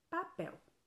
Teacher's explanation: quando eu separo a sílaba de papel a última sílaba de papel é a sílaba mais forte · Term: oxítona